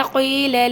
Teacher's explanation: یا مدیہ دو حرف کے برابر اس کو لمبا کریں گے